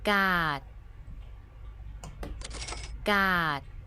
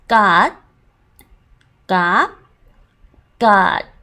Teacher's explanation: you're not releasing the T sound